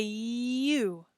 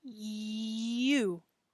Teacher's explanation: in english we say you do you hear that e sound at the beginning